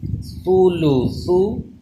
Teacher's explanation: دونوں ثا پہ بالکل سیٹی پیدا نہ ہو